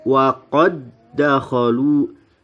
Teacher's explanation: Ada bacaan idgham mutamathilain karena ada dal sukun bertemu dengan dal yang berharokat, maka dibacanya wa qad dakhalu, bukan dibaca Wa qad dakhalu, ya dalnya masuk ke dalam dal yang kedua, ya dal pertama masuk ke dalam dal yang kedua.